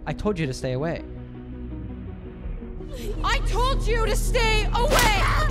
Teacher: we can hear the D plus y combination in told you